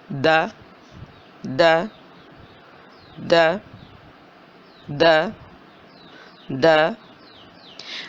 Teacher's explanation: زبان کی نوک دانتوں کی جڑ سے لگ رہی ہے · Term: دال